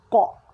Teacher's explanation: Huruf qaf dia adalah huruf yang special yang mana apabila kita sebutkan dia ada bunyi lantunan dia.